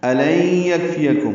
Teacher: الن یکفیکم حمزہ اقصی حلق سے ادا کریں گے، لئی میں نون ساکن کے بعد یعنی کی وجہ سے ادغام ہے، یہ ادغام ناقص ہے، غنہ ہوگا. یکفیکم کاف ساکن پہ ہمس ہے، فا یا جلدی ادا کریں گے، میم ساکن پہ اظہار شفوی ہے.